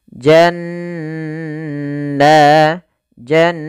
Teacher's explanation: ada Nun bertahrukat tasdid maka dinamakan dengan bacaan gunah cara membacanya menahan suara nunnya